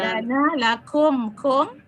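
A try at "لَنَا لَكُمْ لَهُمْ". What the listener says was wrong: Lahum. tadi yang lahum nggak ada la-nya, nggak terbaca.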